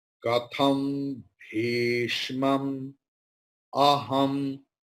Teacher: there anuswara will be ma, because bha is there, bhishma. So bha belongs to pavarga.